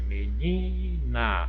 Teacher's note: O ni é a sílaba mais forte.